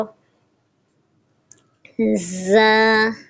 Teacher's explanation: سیٹی والا حرف ہے، اس پہ سختی بھی کریں گے